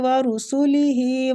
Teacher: ہی کو بھی کھینچیں گے کھڑی زیر کی وجہ سے